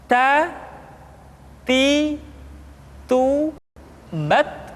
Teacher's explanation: huruf ta ketika diucapkan terdengar ada nafas yang mengalir atau dalam ilmu tajwid disebut dengan sifat alhames. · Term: sifat al-hamas